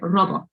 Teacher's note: It was invented by a Czech author, the word robot. But they say robot with the rolled R and the short sound